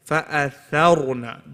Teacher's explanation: The ra is heavy, but not the tha.